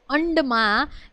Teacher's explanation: પછી અંડમાં એ મૂર્ધન્ય અનુનાસિક સ્પર્શ વ્યંજન છે.